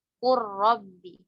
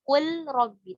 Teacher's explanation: Kemudian setelahnya ketemu huruf ro, ya. Ketika pada kata kul sama bal, kemudian ketemu huruf ro, maka wajib diidghamkan.